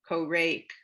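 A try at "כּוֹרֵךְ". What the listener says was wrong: Korech. that's a chaf sofit, a final chaf.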